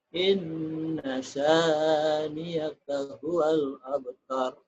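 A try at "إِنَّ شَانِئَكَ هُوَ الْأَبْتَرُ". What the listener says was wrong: bukan inna saniaka ya. Inna syani'aka itu hamzah. A bunyinya. Tapi niakanya jangan niaka ya, jangan niaka. Inna syani'aka, niaka.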